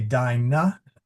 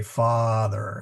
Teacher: Long a is as in father. Notice you say dina but in English you say father. So you actually stretch it out.